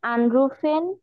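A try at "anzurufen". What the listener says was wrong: আনসুরুফেন। আনসুরুফেন, মাঝখানে সু আছে দেখেন।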